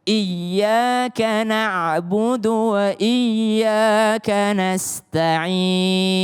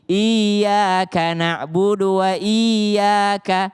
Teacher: seakan-akan huruf sebelumnya nempel dengan huruf setelahnya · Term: tasydid